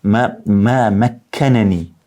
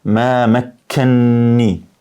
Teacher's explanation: pasi që kanë ardhur dy nuna, njëri ka ardhur me fetha, pastaj ka ardhur me kesra, u shkri edhe ka ndodhur idgham i madh, domethënë me shtrëngim.